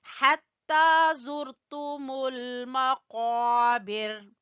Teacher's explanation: الہاکم التکاثر حتی زرتم ہا کو گلے کے درمیان سے وسط حلق بولتے ہیں، ہا کو وسط حلق سے، زرتم المقابر، قاف کو ہم پر پڑھیں گے، موٹا پڑھیں گے، حتی زرتم المقابر۔